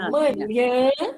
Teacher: quando eu falo manhã, a sílaba tônica é um nhã. E como é a última sílaba, é oxítona.